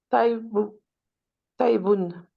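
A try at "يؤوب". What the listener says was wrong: Euh, alors, est-ce que tu es sûr de la première lettre?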